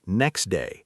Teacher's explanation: A common example, next day, often loses the T sound completely, sounding more like next day. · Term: elision